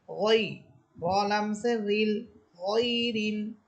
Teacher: গইন এটা মোটা হরফ, অবশ্যই এটাকে মোটা করে পড়তে হবে